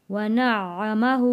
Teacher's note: आइन के ऊपर तशदीद है, 2 बार पढ़ा जाएगा आइन।